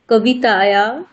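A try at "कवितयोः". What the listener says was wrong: তায়োহ নয়, তয়োহ। তায়োহ নয়, তয়োহ।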